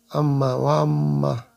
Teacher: এটার পরে যদি নুনে তাজদিদ আসে অথবা মি তাজদি আসে তাহলে এই নুনের উচ্চারণ বা মিমের উচ্চারণ গুন্ডা করে পড়তে হবে। অর্থাৎ নুন এবং মিমের আসল মাখরাজ সেটা বাদ দিয়ে গুন্নার আওয়াজে পড়তে হবে। নাকের মধ্যে আওয়াজ নিয়ে পড়তে হবে।